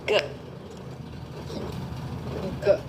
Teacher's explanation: You'll notice the back of your tongue is going and snapping against the back of your palate. G. On the G part of the G, it's slapping against the roof of your mouth and it's then falling G because the is happening after that.